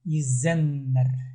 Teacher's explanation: Ударение лучше сделать на Е. Первый слог. Изен. Изеннер.